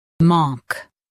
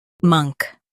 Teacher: For U.S., stress monk with a long aw. In UK, it's monk with a short U.